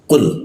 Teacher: lidahnya dinaikkan sehingga udara terkunci dan tidak ada hembusan udara